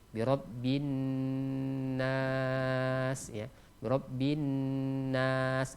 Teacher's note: Nun ketika tasydid itu didengungkan, kemudian ditekan, kemudian dijelaskan, kemudian ditahan selama 2 harokat